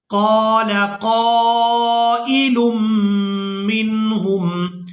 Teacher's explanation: قال قائل منہم، یہاں میم مشدد پر غنہ کریں گے، آواز ناک میں جائے گی اور اس آواز کو کچھ دیر ناک میں روک کر رکھیں گے